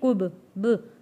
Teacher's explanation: با پہ پیش یا زبر نہیں لگنا چاہیے، کب، ب، صرف آواز واپس پلٹ کر آئے گی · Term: حروف قلقلہ